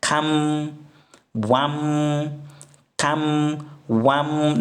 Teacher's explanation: So instead of the nun sound, you just replace the nun with mim, because nun and mim, they come from the same makhraj. That's why there are similarities.